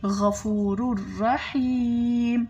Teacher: غین گلے کے اوپر والے حصے سے ادا ہو رہا ہے